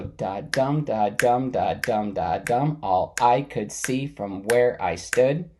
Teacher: say the dumb with more stress, like with a little bit louder and emphasize the dumb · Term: meter